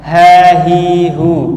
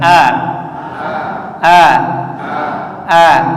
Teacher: Bedanya ketika H ini diucapkan ya dia tidak sepenuhnya terbuka agak sedikit menutup dibandingkan dengan ketika kita bilang a